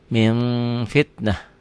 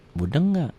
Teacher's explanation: Bila nun mati atau tanwin bertemu dengan fa, bunyinya berubah menjadi mm. Akan tetapi mutlak tidak tertutup rapat, masih ada udara yang keluar ketika membacanya. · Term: Ikhfa